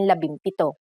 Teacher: If a P follows the NG connector, the NG becomes an M